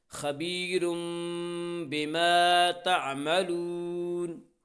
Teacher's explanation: آگے وقف ہے اس لیے وقف کی صورت میں نون ساکن ہو جائے گی